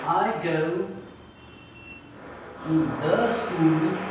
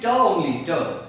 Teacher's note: In rapid speech, it should be pronounced as ta.